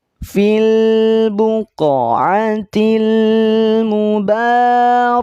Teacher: Qaf, lihat ada huruf di sini, ada simbol, ada rumus qalqalah, berarti qafnya pantulkan